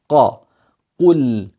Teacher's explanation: The qaf is pronounced right at the back of the tongue when the tongue goes up. qa, qul, and we have this movement of when you say the qaf with the dhamma, you say qu, and then you come back for the lam because it has a sukoon on it.